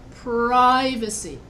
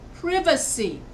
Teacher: here I'm stressing the first syllable, privacy. Now in Britain, they don't say it like that. They say privacy. They stress va instead of pri. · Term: stressed words